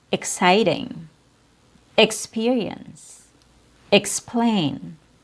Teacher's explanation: Here we have ex as an unstressed syllable